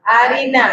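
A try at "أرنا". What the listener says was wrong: Bukan arini ya. Arina.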